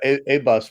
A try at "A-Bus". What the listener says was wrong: You're pronouncing it wrong. It's not A-bus, it's abuse. The U is a long U.